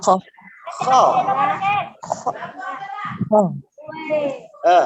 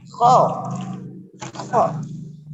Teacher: Kho ini suaranya dari tenggorokan paling atas